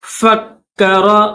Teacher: انہو فکر، فا کو کاف کے ساتھ ملائیں گے، کاف کے اوپر تشدید ہے تو کاف کو سختی کے ساتھ پڑھیں گے، دبا کر پڑھیں گے